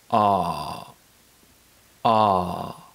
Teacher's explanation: To produce this sound, open your mouth wide and press your tongue towards the bottom of your mouth to create space. Relax your lips and produce a long sound from the back of your throat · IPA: /ɑ:/